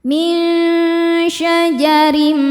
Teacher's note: Karena ada tanwin kasrah menghadapi mim maka tanwinnya lebur ke mim disertai dengung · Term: idgham bighunah